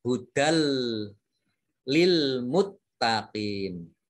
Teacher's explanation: idgham bila gunnah itu idgham yang dibaca tidak mendengung